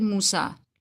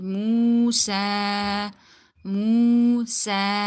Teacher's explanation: So we're going to be stretching it according to one alif. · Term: waw madda